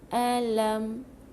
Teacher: jangan tebalkan, bukan o. Okey, buka mulut. Senyum, kita senyum luas-luas.